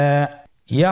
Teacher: ইয়া হরফটি উচ্চারণের ক্ষেত্রে বারিক হবে এবং এক আলিফ টেনে পড়তে হবে